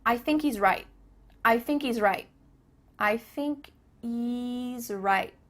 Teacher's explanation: there's no h happening here i think he think he kind of sounds like you're saying